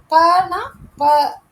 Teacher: இப்ப ப அப்படின்னு சொல்லு பாருங்களேன். பனா ப அப்ப இரண்டு உதடுகள் ஒட்டுவதால் பிறக்கிறது